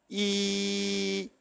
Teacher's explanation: When you say e, then if you notice, the tongue is lifted upwards towards the palate, and the passage is modified a little, and because of this modification of the passage, e sound comes.